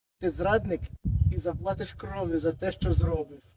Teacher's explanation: typical for the Russian language, to unvoice the voiced consonants at the end